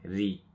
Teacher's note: you see the ra here, it's got kasra. So in this case will be empty sound, will be a light sound